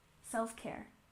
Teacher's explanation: self-care we stress the second syllable